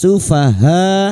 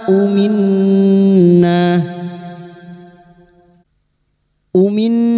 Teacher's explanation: nun yang bertasdid gunna musyadadah kita dengungkan selama tiga harakat. Uminna fathah diikuti alif dua harakat mad thbi'i.